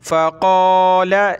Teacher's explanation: قاف کو موٹا کریں گے